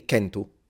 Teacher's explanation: Northern Sardinian, specifically the dialects in the north, retain the C sound as a K, which we lose in all other areas of Italy, including Rome.